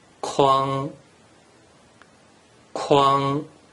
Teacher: combine the consonant ”k” and vowel “uang” together and pronounce it with the first tone